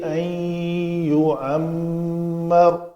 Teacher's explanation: میم کے اوپر شد ہے تو دو حرکت کے برابر غنہ کریں گے